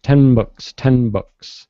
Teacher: I'm not doing that. I'm going to the end sound, but I don't release · I come down with my lips without releasing my tongue, 10, and then I release on the B, books, 10 books.